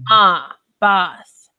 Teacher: the South they would say the a as if it were in the word father ah boss it's a very dry a sound okay so this